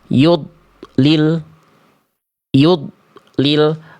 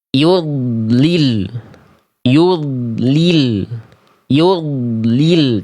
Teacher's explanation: Bagus dnya enggak mantul tapi enggak bagus kalau dnya terputus. · suara dari huruf dnya diputus, ditahan sehingga bunyi dengan berhuruf berikutnya itu ada jarak, ada jeda, ada heningnya dulu. · Jadi donnya itu enggak terputus ya karena dia punya sifat rakho rakhawah. · jangan sampai mencari alternatif agar huruf dotnya tidak memantul, itu dengan memutus suara, tapi tetap dialirkan suaranya. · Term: rokhawah